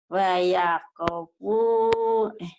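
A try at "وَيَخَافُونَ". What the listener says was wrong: Bukan wayakopu. Itu mah kho. Wayako. Ibu ko-nya ketukar ke ho. Ho-nya ketukar ke ko. Wayako. Kho-nya panjang, Bu. Wa ya kho, panjang.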